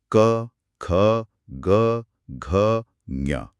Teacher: इन्हें स्पर्श इसलिए कहते हैं क्योंकि इन्हें बोलते समय हवा मुंह के किसी ना किसी हिस्से को छूकर यानी स्पर्श करके बाहर निकलती है · आवाज सीधे गले यानी कंठ से आ रही है। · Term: स्पर्श व्यंजन, क वर्ग